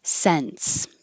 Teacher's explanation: sen your tongue is going to the end position and then when you release it to make the s pulling it down from the end to the s lets air flow through and that creates a tiny t since you're stopping the airflow and releasing it which is a